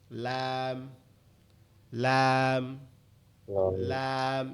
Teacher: লামটা হচ্ছে জিহ্বার আগার কিনারা, সামনের উপরের দাঁতের মাড়ির সঙ্গে লাগায়, সামনের উপরে যে দাঁত আছে এই দাঁতের মাড়ির সঙ্গে লাগায়, লাগায় কি হবে লাম, লাম, লাম।